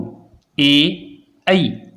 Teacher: जीभ तालु के टकरा रही है और कंठ से भी आवाज निकल रही है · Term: कंठ और तालु